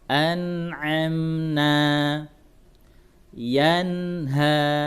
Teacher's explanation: Jadi idhar artinya jelas. Nun sukunnya yang dijelaskan. Ya, tidak boleh disamarkan, tidak boleh didengungkan, tapi dijelaskan nun sukunnya.